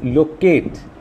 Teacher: lo will not be stressed, kate will be stressed.